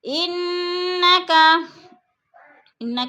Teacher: انا کی نون مشدد ہے، غنہ کریں گے سختی سے، جمع کر پڑھیں گے.